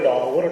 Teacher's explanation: जीभ जो होती है वो थोड़ा झटका सा मारती है जब इनका उच्चारण करते हैं। उच्छिप्त का मतलब होता है फेंकना, तो इनका उच्चारण करते समय ऐसा लगता है जैसे जीभ जो है मतलब झटका मार के जो है कुछ फेंक रही है। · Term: ताड़न जात